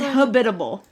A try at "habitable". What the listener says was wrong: not the accent but the amp the fastest on the wrong the emphasis yeah you're saying like hospitable